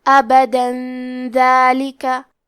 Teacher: دال حروف الاخفاء میں سے ہے، تو ہم یہ حکم کو غنہ کے ساتھ ادا کریں گے، ابدا ذالکہ، اور ہم کلمت ابدا پہ رکے تو تنوین زبر پہ مد الف سے رکیں گے، ابدا۔